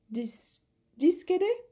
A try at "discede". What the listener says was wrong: Non, on accentue sur le « e ». Hein. Discede, ça c'est l'accent naturel du mot, c'est sur le « e ». Donc c'est discede.